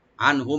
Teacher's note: আনহুম আর মিম সাকিন যেটা আছে এখানেও এটা আমরা এজাহার করব, এখানে দুইটা। আনহুম নুন সাকিন আর মিম সাকিন দুইটাতে আমরা এজাহার করব, গুন্না হবে না